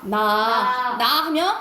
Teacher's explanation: 순간적으로 혀 끝이랑 윗잇몸이 닿아요.